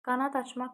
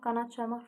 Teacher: Yəni öz kar qarşılığına keçir. Qanad açmaqda d qalır, amma qanad çalmaqda d t-ya keçir.